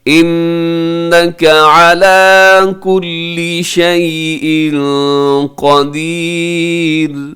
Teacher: انک نون مشدد ہے، علی کل شیء یہاں پہ اخفا آپ نے کرنا ہے کیونکہ تنوین کے بعد قاف ہے